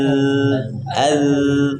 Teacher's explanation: Memang suaranya mengalir, tapi dia punya getaran.